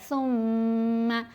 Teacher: آواز کو ناک میں جب پڑھتے ہیں اس کو غنہ کہتے ہیں, اور غنہ کی مقدار 2 حرکات کی مقدار کے برابر, یعنی 2 حرکات کی مقدار ہم نے اس آواز کو ناک میں ہولڈ کرنا ہے, کھینچنا ہے, اسٹریچ کرنا ہے. ثم, یہ جو کی آواز ہے یہ غنہ ہے.